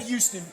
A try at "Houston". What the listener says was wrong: you said Houston. I was like, you mean Houston? No, you said Houston, like with a U, like Houston.